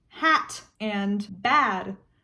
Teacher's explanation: For instance, if you have a word like hat and bad, technically they don't rhyme because they don't end with the same consonant. If you take away the consonants and just look at the vowels and the sound that the vowel is making, they both just go ah.